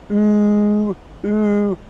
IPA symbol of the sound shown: u: